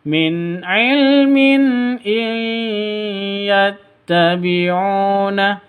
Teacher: Cara bacanya masuk ke ya disertai dengung dua ketukan. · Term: idgham bi gunnah